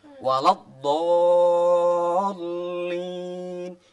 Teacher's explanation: kalau membaca mat lazim kilmi musaqqal memang benar-benar harus lebih panjang dan harus ditekan